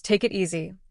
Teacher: For example, in the phrase "take it easy," the K at the end of take connects to the I in it. Even the T in it connects to easy. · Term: sounds often link together